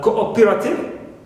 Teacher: in words like cooperative, stress is on o, not on co